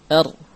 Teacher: Nah, ra memiliki sifat di antaranya takrir. Ada getaran pada ujung lidah, r. Kemudian inhiraf, kemudian jahr, kemudian bainiyah dan istifal.